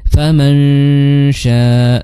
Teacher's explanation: Jadi faman syaa dzakara, bukan faman sya, tapi faman syaa, sudah melipir lah ke makhraj huruf shin ya, lidahnya sudah siap-siap mengangkat tengah lidahnya